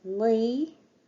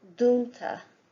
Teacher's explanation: the broad sound, the tip of the tongue is pressed against the upper teeth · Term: broad N